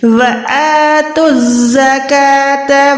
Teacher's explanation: تا کو ہم نے زا شد کے ساتھ ملا کے ادا کرنا ہے. تا زا پیش تو زا زبر زا، کاف کھڑی زبر کا، تا زبر تا.